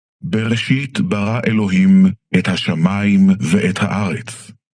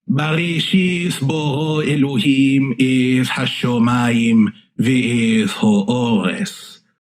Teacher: there's no difference between what you had as an aw and an ah, the kamatz and the patach